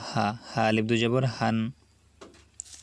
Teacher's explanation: এই হা কিন্তু আমাদের গলার ভিতরে যাবে না, আমরা কণ্ঠনালীর শুরু থেকে হাটা উচ্চারণ করবো। হা স্বাভাবিকভাবে বলবো হা।